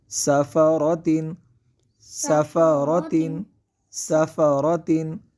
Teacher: اور را کو یہاں پہ پر کریں گے، سین کو سیدھی کے ساتھ ادا کریں گے، اور را کو پر پڑھیں گے کیونکہ را پر زبر ہے